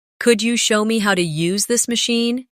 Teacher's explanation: Could you becomes could ya in casual rhythm.